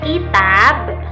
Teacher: Kemudian pada kata kitab, ki-nya itu suku kata pendek dan tabnya itu suku panjang.